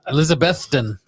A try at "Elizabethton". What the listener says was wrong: No, more emphasis on Beth. Okay, Beth. Elizabethton.